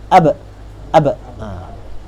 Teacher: Qalqalah ni berlaku at-taba'ud baina tarafain udwin nutqi. Maksudnya dengan menjauh di antara dua anggota sebutan dia.